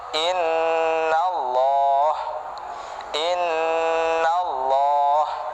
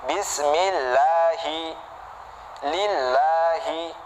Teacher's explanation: Ketika ada kata Allah, lamnya tebel, lo bukan la ya kan, dengan syarat harokat sebelumnya itu harus dhammah atau fathah, baru lamnya itu tebel, jadi lo ya kan, bukan la. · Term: lam yang mufakham